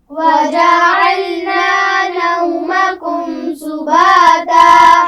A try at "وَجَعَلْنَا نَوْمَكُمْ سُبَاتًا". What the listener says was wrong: شاباش.